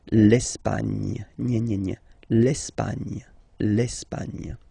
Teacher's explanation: don't insist on the final E because basically it's not pronounced